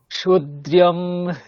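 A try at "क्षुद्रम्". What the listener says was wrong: আচ্ছা ক্ষুদ্রম, ওখানে ইয়কার নেই, আপনি যেটা উচ্চারণ করছেন সেটা ইয়কার আছে মনে হচ্ছে, ক্ষুদ্রিয়ম এরকম নেই, ক্ষুদ্রম। যেমনটা স্পেলিং আছে উচ্চারণ তেমন করতে হবে।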